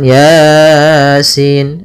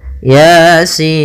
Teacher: ya-nya dua harakat sinnya 6 harakat